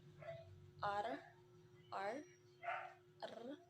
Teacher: voiced alveolar trill